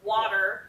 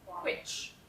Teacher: the difference between the voice and voiceless w is what some people still distinguish as w and w h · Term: voiced and voiceless W